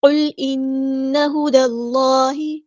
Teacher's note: قاف ہمارا heavy letter پورا ادا کریں گے، لام ساکن کو ہلائیں گے نہیں ، قل نہیں پڑھنا، قل انا نہیں پڑھنا، انا صرف غنہ